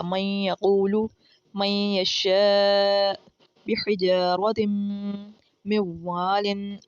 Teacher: नून की आवाज़ थोड़ी सी नाक के अंदर जाके गुनगुना रही है, यहाँ पर हमारा गुन्ना हो रहा है।